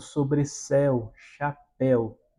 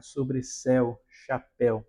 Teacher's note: Veja que são palavras oxítonas, né? Nós temos a força maior da palavra ao fim dela, e que tem essa sonoridade mais aberta